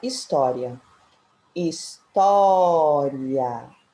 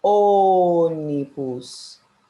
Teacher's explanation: Porque na palavra história, o som é aberto. E já na palavra ônibus, o som é fechado. Preste atenção nos sinais que são usados nessas palavras.